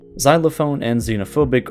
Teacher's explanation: But sometimes, when placed by other letters, just causes it to make a completely different sound. Xylophone and xenophobic are two examples where the sound just completely switches to a Z